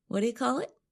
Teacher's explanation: we change the three words what do you to Whata when we speak quickly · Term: fast speech